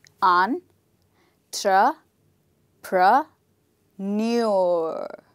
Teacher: the stressed syllable is the last part of the word